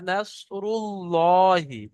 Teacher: এখানে আল্লাহ শব্দের পূর্বে অর্থাৎ র উপরে পেশ আছে, আর জবর অথবা পেশ থাকলে আল্লাহ শব্দকে পুর করে পড়তে হয়, অর্থাৎ মুখ গোল করে ল পড়তে হয়, লা নয়।